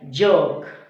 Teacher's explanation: जब ये sound produce होता है तो वोकल कॉर्ड में वाइब्रेशन होती है